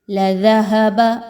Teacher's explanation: ذال کو دیکھیں تو یہاں پر اس کے مخرج سے ادا کریں گے، زبان کے نک کو تھوڑا سا باہر نکالتے ہوئے، سیٹی کی آواز کو ختم کرتے ہوئے. لَذَهَبَ، ہا کو اس کے مخرج سے بھاری انداز میں ادا کریں گے.